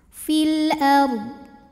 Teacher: huruf qamariah yaitu Hamzah maka lam sukun dibaca jelas fil ARD huruf r sukun dibunyikan secara tafkhim sebab huruf sebelumnya berbaris fathah maka dibaca dnya tebal fil ARD dodnya harus tetap terbaca ya